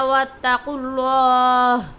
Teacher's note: وَاتَّقُوا اللَّهَ میں قاف اور اللہ کے نام کو بھی موٹی آواز سے پڑھیں گے